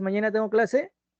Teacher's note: no hay ni alzas y bajas en cuanto a la entonación es tranquilo es normal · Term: descendente